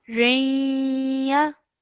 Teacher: you have to produce a 2-second nasal sound in between the ra and the ya whilst joining them together